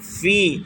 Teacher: پھر فا میں کھڑا زبر، اسے بھی 1 سیکنڈ یا 2 سیکنڈ کھینچیں گے. فی العقد، فا کے بعد یا ہے حروف مدہ لہٰذا اسے بھی کھینچیں گے